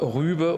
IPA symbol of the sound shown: y